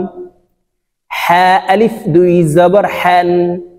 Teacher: হলকের মধ্যখান থেকে হা উচ্চারণ করতে হবে।